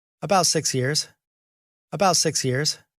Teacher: pitch goes up a little bit in at the end he's made a statement but he's going to keep going he's going to say a little bit more about that about